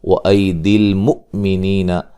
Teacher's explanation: حمزہ کو جھٹکے سے ادا کریں گے